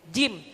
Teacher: Jim itu enggak ada angin yang keluar